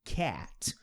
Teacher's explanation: Boca aberta, mas meio que fazendo um som de E.